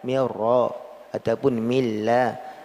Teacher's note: hilang nun secara seutuhnya. Ini idgham kamil, dan idgham kamil ini adalah asli, dasarnya.